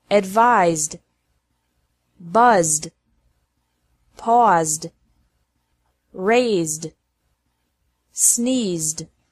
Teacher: Ed is pronounced like D after verbs ending with a Z sound.